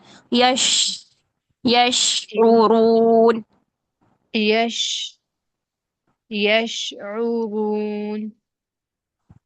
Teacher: शीन का मखरज जुबान का दरमियान ऊपर तालू से चिपकता नहीं है इसमें गैप रहता है और गैप क्यों रहता है तफशी लाने के लिए जुबान के